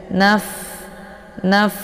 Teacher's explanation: posisi fa ini yaitu di perut bibir sebelah dalam bagian bawah, ya, dengan 4 gigi seri bagian atas, ya, dengan ujung gigi seri bagian atas.